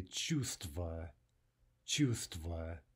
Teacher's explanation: In the word for feeling, we also drop the v.